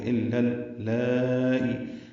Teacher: الا حمزہ کو لام سے ملانا ہے، لا الف مدہ تھا لیکن ملانے کی وجہ سے لل ہو گیا ، الا اللائی، لام پر کھڑا زبر ہے اور آگے حمزہ